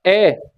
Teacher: आधा मुंह खुला है, आधा मुंह खुला है तो इसमें क्या आ सकता है आपका, ए। आ में पूरा खुला है और ए में आपका आधा खुला है